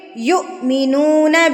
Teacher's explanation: جو حمزہ کے اوپر جزم کی سکون کی حالت ہے یہاں پر ہم نے اس کو جھٹکا دے کے پڑھنا ہے